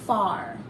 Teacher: that r took total control over that a you no longer hear that short vowel a sound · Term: our controlled vowel sound